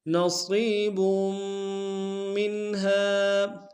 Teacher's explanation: با کی تنوین کو آگے میم کے سامنے لائیں گے، میم کو بشدت زور دیں گے